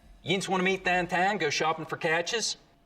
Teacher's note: smoothing is when you take a diphthong like ow and smooth it out so it's just one sound